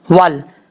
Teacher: इसके बाद है वाव ज़बर लाम, वल, वाव को जब लाम से मिलाएंगे तो बीच में अलिफ को छोड़ देंगे